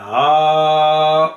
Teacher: और उसके बाद हाउलाई का जो हा है, इसे भी प्रोलॉन्ग करना चाहिए। इसे सिंपल या नॉर्मल हाउलाई नहीं पढ़ना चाहिए, बल्कि हा को प्रोलॉन्ग करना है, हाउलाई। फिर इन कुंतुम, ये इख्फा है, यहाँ पर इख्फा होना चाहिए, तो यहाँ पर भी इन कुंतुम वाज़े पढ़ा जाता है, तो इसका भी ख्याल रखना चाहिए।